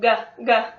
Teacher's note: When I started out my vocal lessons, I started with goos because the G consonant it closes my vocal cords for me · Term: the G sound